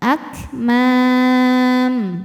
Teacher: Mad tabi'inya alif didahului fathah, huruf yang disukunkannya mim, maka mimnya panjang, boleh 2 atau 4 atau 6 harokat asal konsisten dalam sekali baca. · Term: mad arid li sukun